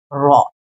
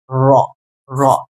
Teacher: কারণ দেখো আমরা যখন র টাকে উচ্চারণ করি র তখন আমাদের জিহবার যে আধাটা আছে সেটা বাঁকা হয়ে মার সাথে একটা কম্পন সৃষ্টি করে যার কারণে এটাকে আমরা কম্পনজাত বর্ণ বলি যেমন র একটা কম্পন সৃষ্টি করতেছে